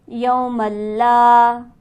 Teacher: لا پر ہمارے پاس حرف مدہ موجود ہے، اسے ہم کھینچیں گے 1 الف کے برابر